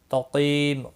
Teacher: قاف مستعلیہ ہے، پور پڑا جائے گا، قی یا مدہ ہے، 1 الف کے برابر کھینچ کر پڑھیں گے، اور میم ساکن پڑا جائے گا وقف کی صورت میں۔